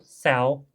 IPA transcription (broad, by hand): sɛw